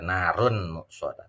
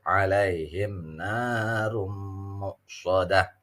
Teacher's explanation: Ro-nya ro tafkhim karena harokatnya dhammah. Tanwin ketemu mim, ini yang disebut dengan idgham bi gunnah.